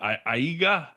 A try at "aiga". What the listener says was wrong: Ainga. Samoan has this really lovely and mysterious invisible N thing. So anytime you have a G in Samoan, pretend like there's an N right before it. So IAGA instead of Aiga would be Ainga.